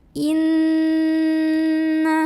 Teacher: cara membunyikannya adalah didengungkan ditahan kurang lebih dua harokat · Inna, ada hukum gunnah musyaddadah karena ada nun yang bertasydid. Maka cara membunyikannya adalah didengungkan, ditahan kurang lebih 2 harokat. Jadi bunyi an-nya ditahan. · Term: ghunnah musyaddadah